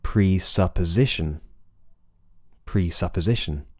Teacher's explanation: as well so presupposition the stress is on Z presupposition but there's a minor stress the pitch goes up slightly the pitch of your voice goes up slightly for pre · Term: secondary stress